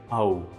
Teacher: pronouncing both aa and uu one after the other, you get auu